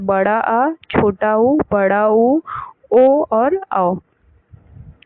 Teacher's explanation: जिन स्वरों के उच्चारण में मध्य भाग कार्य करता है तो जीभ का मध्य भाग कार्य करता है तो वो मध्य स्वर होते हैं। और जिन स्वरों के उच्चारण में जीवा का पिछला भाग सक्रिय रहता है उसे पश्च स्वर कहते हैं